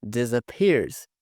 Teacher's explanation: Esse A aqui tem um som de schwa.